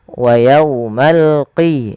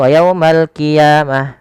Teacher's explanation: Dia adalah huruf qaf ya, lebih tebal hurufnya, dan dia sifatnya sifat isti'la, pangkal lidahnya terangkat.